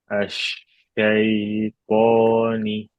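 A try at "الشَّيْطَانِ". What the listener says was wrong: Belum, masih ada terputusnya. Syai, Syai.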